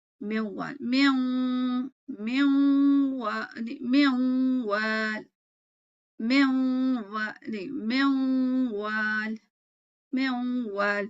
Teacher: So 50% of the sound should be ya and wow and the other 50 should be gunna. یعنی کہ جب منوال ہے suppose تو اس میں جب واو پڑھ رہی ہوں تو اس میں آپ کو واو کی آواز بھی آنی چاہیے، 50% واو آنا چاہیے، 50% غننے کی آواز آنی چاہیے.